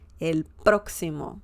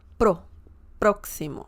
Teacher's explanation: You have the emphasis on the first syllable, próximo.